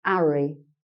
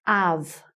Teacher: the cockney speaker tends to miss off the h